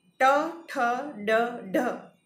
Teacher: ટ, ઠ, ડ, ઢ જે જીભના અગ્રભાગ વડે ઉચ્ચારાય છે અને જીભ તાળવાના સૌથી ઊંચા ભાગ એટલે કે મૂર્ધા જેને આપણે કહીએ એની પાસે જઈને હવાને સંપૂર્ણ રીતે અવરોધે છે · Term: મૂર્ધન્ય વ્યંજનો